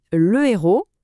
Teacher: Chaque fois qu'on dit le héros au lieu de l'héros, on fait une petite pause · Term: H aspiré